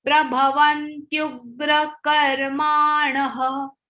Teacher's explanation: Because there is a visarga and it is followed by ksha. So visarga sound is ha.